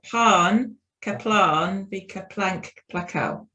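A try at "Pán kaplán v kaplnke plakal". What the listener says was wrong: Yeah, that's right.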